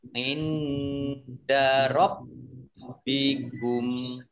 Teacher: nun sukun bertemu dengan huruf dal, bacaan ikhfa, dibaca samar-samar. Baknya dibaca double, ada tasdidnya.